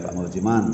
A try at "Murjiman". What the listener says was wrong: Murjiman perlengkapan. Mur ada R Mur.